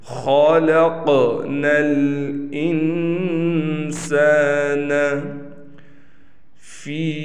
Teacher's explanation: خا بھی حروف مستعلیہ میں سے ہے، لہٰذا اس کو بھی ہم نے موٹا کر کے پڑھنا ہے۔